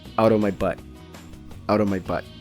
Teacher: The phrase out of is commonly reduced to just outa. So what we hear is out of my butt.